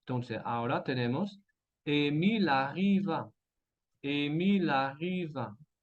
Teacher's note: vamos a conectar la V con la A para decir ahora arriva.